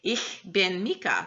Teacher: that ich sound is a very kind of glottal throat sound that we don't tend to use a lot in English